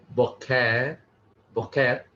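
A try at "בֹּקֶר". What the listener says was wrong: The emphasis on the first syllable. case, it's not called a makef, but I'm not actually sure what the term for that is, but it's an accent mark.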